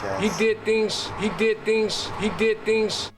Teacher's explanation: So the Z sounds at the end of words turn into more of an S sound. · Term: devoicing